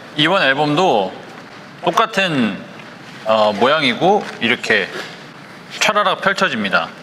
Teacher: And this intonation here might not look like much, but this is very smooth, almost default Korean intonation. The start of the word will go up a bit and then at the end go back down. And you can really see this sort of thing on like short words like 똑같은 and 이렇게, which go up and then back down.